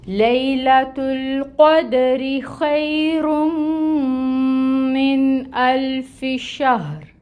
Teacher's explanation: تفشی، اس کی صفت کو واضح کریں گے۔ ہا اقصا الحلق سے ادا ہوگی، رو کو ساکن کریں گے، وقف کریں گے یہاں پہ، اور اس کو پر ادا کریں گے۔